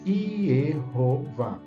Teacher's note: São 2 sílabas, Yeho e Vá, a segunda sílaba tônica, mais forte